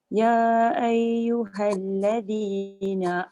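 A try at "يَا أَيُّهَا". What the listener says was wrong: Ya tu kena baca panjang. Kat situ mad munfasil. Ya paling kurang pun 4. Dia tak boleh kurang dari 4.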